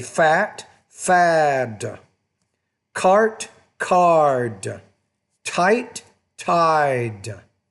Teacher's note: When the D's at the end of the word, you're going to make the vowel before it longer.